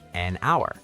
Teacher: The word hour starts with the letter H, but the H is silent, so it actually starts with a vowel sound, ow, so we say an hour.